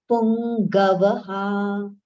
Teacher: That g sound, nasal sound should be heard clearly